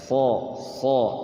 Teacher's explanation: Huruf isti'la itu fathahnya itu bunyinya jadi bunyi huruf O.